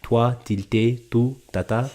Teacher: In English, we pronounce our TD and N with the tip of our tongue, so we're like toi, tilte, tu, tata. But in French, it's a softer sound because they're articulating with the blade of the tongue, which is beyond the tip.